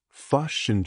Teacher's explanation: The short I sound often becomes something closer to a U.